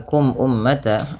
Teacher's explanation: Kemudian pada lafal kum ummata ada mim mati bertemu dengan hamzah, maka hukum tajwidnya yaitu izhar syafawi, yang dimana suara mimnya dibaca dengan jelas